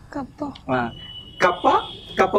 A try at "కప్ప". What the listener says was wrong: పప్ప కాదండి కప్ప కప్ప